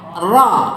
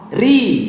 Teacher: Kalau di kasrah namanya ra tarqiq. Tipis.